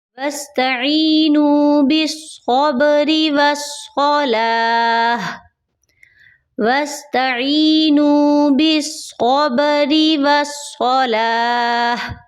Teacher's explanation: صاد کو آپ نے موٹا کرنا ہے تاکہ سین صاد ثا کی آواز میں آپ فرق کر سکیں